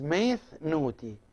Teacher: As I said at the beginning of this part, that it is either met with a taf, with a t sound, or meth with a thigh, with a theta. So here, when the word itself starts with ni, the n sound, and some other sounds, we use the th here instead of the t.